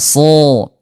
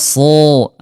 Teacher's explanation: kalau huruf sod dia istilah tebal diangkat pangkal lidahnya, itbaq dia lengket ya, so tebal ya so, dia diangkat pangkal lidahnya ya.